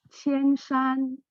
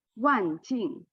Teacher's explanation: with the pitch of the pronunciation, you have that kind of drop from the first tone to the fourth tone.